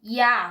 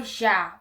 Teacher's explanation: O J tem som de I, que não é uma coisa muito difícil de se falar